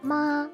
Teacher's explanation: the only tone that does not change pitch uh in the course of its pronunciation is ma and it's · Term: flat tone